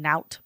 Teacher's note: And that N which is a nasal sound if we just pinch our nose the sound stops. So that helps us get into this small space as well that helps with that continue with continuous feel along east of [Music] you.